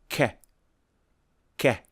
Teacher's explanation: the sound is produced when the tongue and the roof of the mouth part ways · the back of the tongue is raised and touching the soft pallet as you can see which produces the C sound and the